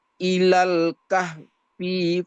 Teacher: setiap ada kalimat al-kahfi, hinya dibaca pendek ya